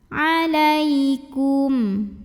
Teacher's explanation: karena ada ya sukun yang didahului baris fathah. Maka cara membunyikannya cukup dilembutkan.